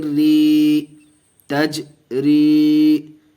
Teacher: یا ساکن سے پہلے زیر ہے، یا مدہ کا قاعدہ، اس کو کھینچ کے پڑھیں گے ایک الف کے برابر۔ · جیم آیا ہوا ہے اور اس کے اوپر جزم ہے، اس لیے قلقلہ ہوگا، اس کو قلقلہ کر کے پڑھیں گے۔